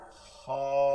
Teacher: কন্ঠনালীর শেষ থেকে কন্ঠ শেষ থেকে তালুতে ঘষে আসতে হবে